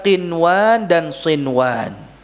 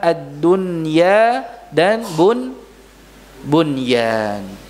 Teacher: Nun sukunnya dibaca dengan jelas. Walaupun bertemu dengan waw, namun pertemuannya di dalam satu kata. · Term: izhar mutlak